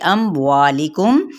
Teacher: وا پہ مد سے بالالف اور لام کی زیر کو لمبا نہیں کریں گے